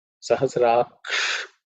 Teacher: Sahasraksh, again the ksha, the sha is cerebral sha